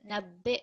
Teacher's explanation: so you hear a slight vibration of the hamza.